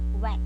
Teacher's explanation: as the sound is articulated, the lips narrow and back of the tongue touches the soft palate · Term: bilabial velar